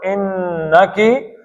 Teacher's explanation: نون کو کھینچنا ہے، شد ہے اس کے اوپر،